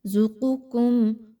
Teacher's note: قاف پہلے والی موٹی، اس کے بعد دوسری باریک